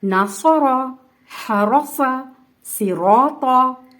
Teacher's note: زبر کے حروف ہیں, اس میں ہم نے را کو پر پڑھا ہے